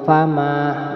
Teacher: ma-nya juga panjang satu alif ya, panjang satu alif karena alif jatuh setelah harokat fathah, bacaan mad tabi'i.